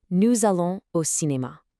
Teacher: That little Z sound connecting nous and allons?